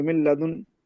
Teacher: مل ملتن، لدن، نون ساکن ہے، اس کے بعد لام آ گیا، اب لام یہ اس میں سے یرملون میں سے ہے، تو یہاں پر ادغام کریں گے، غنہ نہیں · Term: ادغام بغیر غننے